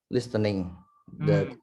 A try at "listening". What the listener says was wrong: Oh, remember when you talk about listening, you don't have to read the T. So listening.